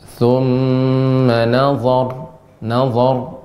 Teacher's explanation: ra-nya diberikan tebal dan ditambah dengan bainiyah, agak sedikit mengalir